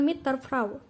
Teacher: Bunyi D pada kata der berubah menjadi bunyi T sebagai akibat dari pengaruh bunyi T pada kata mit yang ada di depannya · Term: asimilasi progresif